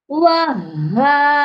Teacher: ادھر ہا مشدد ہے اور دو آوازیں لازمی آنی چاہیے، دو بار ہا کو پڑھنا ہے